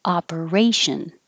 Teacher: the first o sounds like ah